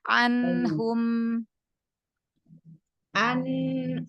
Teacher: Nun ketemu ha, idhar halqi ya, kasih bain ya.